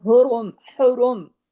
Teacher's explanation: रा पे जब पेश आ गया तो रा हैवी हो गया